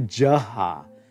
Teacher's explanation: the velar voiced aspirate h is going to become the voiced palatal j.